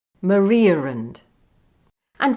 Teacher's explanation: One in Maria and, where I inserted a r sound. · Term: intrusion